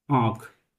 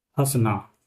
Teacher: वे स्वर जिनके उच्चारण में वायु मुख एवं नाक दोनों से निकले। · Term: अनुनासिक स्वर